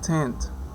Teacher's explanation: We have t, which is voiceless, lingual alveolar, stop